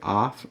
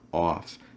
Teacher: And you can also have an ah sound for the off, or you can use an aw sound. Now, I personally use an aw sound, but you will hear lots of native speakers that pronounce it with an ah. So you can either say off or off.